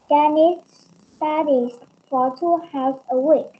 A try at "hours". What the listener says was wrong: Hours, cái này không phải how đâu. Từ này là hour. Nhưng mà ở đây là hours.